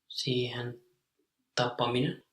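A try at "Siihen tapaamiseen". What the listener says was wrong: Like the long vowel sound. A. Yes, with 2 A's.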